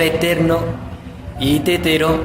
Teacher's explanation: las que mandan la parada y suenan más fuertes son ter y te, que son las penúltimas, por eso se llaman graves.